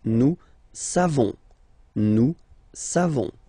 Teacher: So classic ending for nous, O-N-S. You don't pronounce the final S.